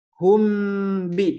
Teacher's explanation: Dikarenakan huruf yang pertamanya ini yaitu huruf mim tersisa sifatnya yaitu sifat gunnahnya. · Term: ikhfa